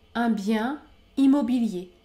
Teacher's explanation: je ne prononce pas le N à la fin du mot bien